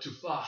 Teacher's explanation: And you have to have this really breathy H in there, and that's some extra difficult stuff right there.